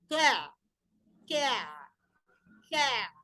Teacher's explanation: kita melafatkan huruf kaf, tapi kita berikan cekungan, tentunya akan tebal.